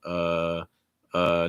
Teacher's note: uh typically has a rising intonation